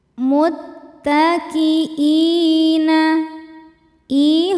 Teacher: Sebab ada hamzah yang dipanjangkan. Hamzah berharakat kasrah ketemu ya sukun ya. Maka dibaca panjang i-nya dua harakat. Ini sangat mirip dengan mad badal.